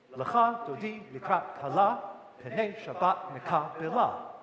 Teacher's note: the syllabic emphasis gets put on the second syllable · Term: iambic